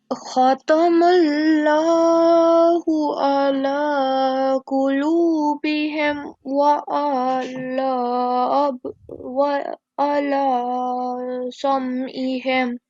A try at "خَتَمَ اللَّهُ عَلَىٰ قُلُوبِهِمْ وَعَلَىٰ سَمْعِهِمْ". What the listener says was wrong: Okay, we do not prolong the ayn, so we have to make sure that we do not prolong fatha, dhamma, kasra, but we pronounce it from our throat.